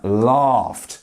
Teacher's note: the GH isn't making any kind of vibration on your chest so here we have the T laugh